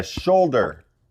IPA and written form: ˈʃoʊl.dər (SHOULDER)